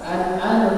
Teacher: An'am itu izhar. An'am mati bertemu dengan ain itu izhar. Jadi tidak didengungkan.